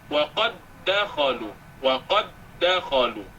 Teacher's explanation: Contoh wa qad dakhalu, dal dengan dal. Dal pertama sukun, dal kedua berbaris, maka dimasukkan dal pertama pada dal yang kedua. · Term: idgham